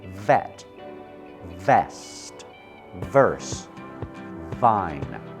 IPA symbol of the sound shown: v